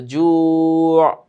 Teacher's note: মিন জু', শেষে আবার আইন। তো জু', আইনের একটা ধাক্কা গলায় গিয়ে লাগবে